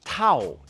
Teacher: to is a short word that falls as you say it to don't say to or to it's a completely different word